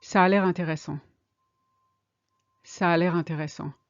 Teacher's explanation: You see how the two A's blend in together again.